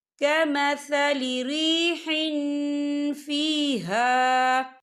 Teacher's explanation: مثل ما ينفقون فی هذه الحیاة الدنیا کمثل ریح فیہا، یا دیکھیں کمثل ریح، ہا کے نیچے تنوین ہے، تنوین کے بعد جو ہے فا آ رہا ہے، اور فا جو ہے افا کا ورڈ ہے، تو ہم یہاں افا کریں گے، تنوین کی آواز کو ناک میں چھپائیں گے۔